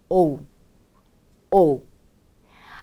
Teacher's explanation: 오에 또 역시 좀 더 크게 강세를 넣어주신다는 느낌으로 오에 힘을 주시고 자연스럽게 우까지 소리를 연결해 주세요